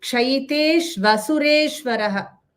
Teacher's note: The shu and a joined together becomes shva.